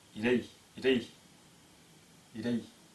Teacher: произносится как и не ы а и потому что она долгая